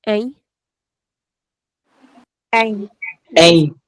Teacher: This is not m this is a nasal sound a.